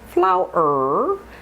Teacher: Flower ends in a voiced R. Flower. So therefore that is a Z sound because the R is voiced.